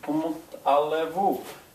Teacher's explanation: You hear the T because of elision.